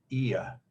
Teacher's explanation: It moved from top left to middle, your tongue as you say it. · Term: falling diphthongs